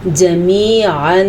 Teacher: حلق کے 3 حصوں میں سے وسط حلق یعنی کہ درمیان والے حصے سے عین نکلتا ہے، اور اس کے علاوہ تنوین کے بعد الف آیا ہوا ہے یعنی کہ حمزہ آیا ہوا ہے۔